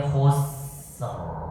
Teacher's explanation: Khus, berikan dia desisnya dulu, keluarkan dia hams. Totalitas hams itu harus totalitas desisnya.